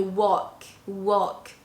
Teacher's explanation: i'm not pronouncing the l in a walk